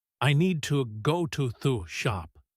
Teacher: Feel how your mouth barely moves for to and the. Your energy is on need and go and shop. The small words just slide out.